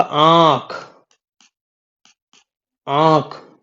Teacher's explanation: वहां पे मुख से ज्यादा बाहर निकल रही थी, नाक से कम निकल रही थी। और चंद्र बिंदु में वायु मुख से कम बाहर निकलती है और नाक से ज्यादा निकलती है।